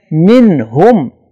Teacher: نون ساکن کے بعد حروف اظہار میں سے ہا آ رہا ہے لہذا نون پہ غنہ نہیں ہوگا